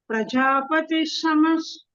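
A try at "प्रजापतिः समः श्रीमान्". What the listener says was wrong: You're still saying Prajapati Shamash. You're saying an extra sakaraha. There is no visargaha between Prajapati and Sama. Prajapati Sama. Prajapati Sama Shriman.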